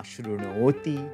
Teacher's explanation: the dental N becomes a retroflex N